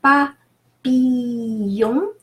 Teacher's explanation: ILL is pronounced E, it's a long E. The L is not pronounced at all · The L is not pronounced at all, so papillon. The final ON is a nasal O